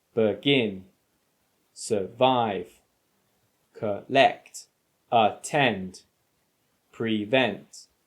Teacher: these are all verbs with two syllables action words and they tend to have the stress on the second syllable